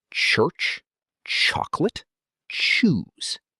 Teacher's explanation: The English ch sound is a combination of a t and a sh sound, made quickly together.